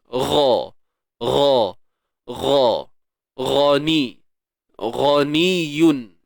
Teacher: Wallahu gha, huruf ghain. Hujung kerongkong kita.